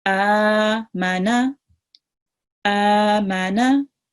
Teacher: Meme is 1 second, noon is 1 second. Just the alif is a bit longer, is 2 seconds, because it carries the vertical fatha.